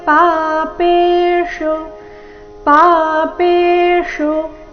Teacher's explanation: ಪಾಪೆ ಎರಡು ದೀರ್ಘ ಚರಣದ ಕೊನೆಗೆ ಬಂದಿರೋ ಶು ರಸ್ವ ಬರಬೇಕು